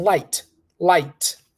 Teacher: we are not going to pronounce the k we're saying light light